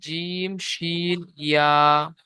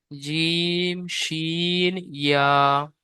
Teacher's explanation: এই তিনটা অক্ষরে মাখরাজ জীবের মাঝখান এবং তার বরাবর উপরের তালুর সাথে লাগিয়ে উচ্চারিত হয়